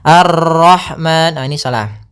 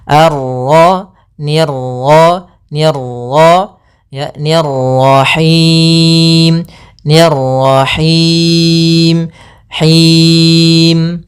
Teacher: Misalnya Ar-Rahman, ini salah. Untuk pantulan dalam huruf ra itu cukup sekali saja, karena sifat ra ada sifat takrir, yaitu pengulangan, tapi hanya sekali.